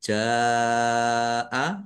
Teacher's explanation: menjadi mad wajib muttasil dibaca panjang harus lima harakat